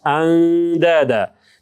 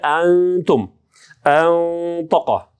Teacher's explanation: Бұл учурда біз нунға жақындаймыз. Нун ашық болбойды, бирок нунға жақындаймыз. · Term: әл-ихфа әл-әдіна